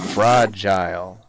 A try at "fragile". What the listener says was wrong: Fragile? Why are you putting so much emphasis on the I?